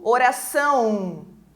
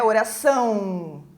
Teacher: o O tem papel de semivogal e ele tem som de U, oração. É como se saísse um U e bem nasalizado ainda, né?